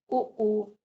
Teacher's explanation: उ ओष्ठ वर्ग के हैं और होंठ से बोले जाते हैं